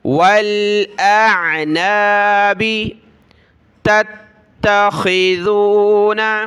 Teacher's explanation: دوسری تا کو سخت کیا تشدید کی وجہ سے